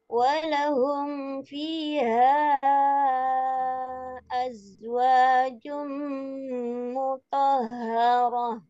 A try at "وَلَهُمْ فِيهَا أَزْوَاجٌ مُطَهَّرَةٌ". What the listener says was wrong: Nah, sedikit lagi Bu, humnya kurang jelas. Walahum hum fi